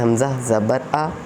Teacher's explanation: زبر کی آواز اوپر کو اٹھتی ہے جیسے حمزہ زبر آ۔